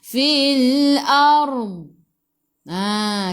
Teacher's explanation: tepi lidah kita menyentuh gigi geraham atas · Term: huruf dad